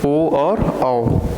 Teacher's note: 4 वर्ण ऐसे हैं जिसके उच्चारण में हमारा जो ओठ है वो एक वृत्त की तरह बनता है। कंप्लीट सर्कल तो नहीं, लेकिन थोड़ा सा उसी तरीके का बनता है। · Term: वृत्ताकार